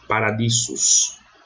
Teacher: O S tem som de SS, nunca som de Z.